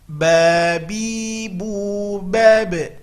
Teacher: Huruf ba adalah huruf qalqalah, pantulkan ketika sukun.